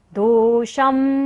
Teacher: श के ऊपर जो बिंदी है उसका उच्चारण क्या होगा, म।